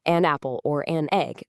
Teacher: An apple or an egg lets you blend it perfectly so it just flows out as one unified rapid sound